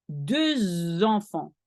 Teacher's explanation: did you notice that I linked de to enfant?